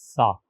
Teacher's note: اس ثانی کو سا سے پڑھنا چاہیے اور اس کا تلفظ زبان کی نوک سے کیا جاتا ہے